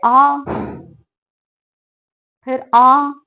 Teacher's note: विवृत स्वर के उच्चारण में मुख द्वार पूरा खुला होता है।